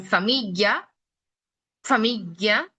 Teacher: los dientes superiores tocan el labio inferior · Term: labiodental